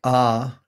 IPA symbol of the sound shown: a